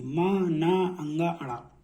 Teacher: जब भी इनको बोलेंगे ना, नाक से ध्वनि निकलेगी आपकी, मा, ना, अंगा, अड़ा, ठीक है। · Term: नासिक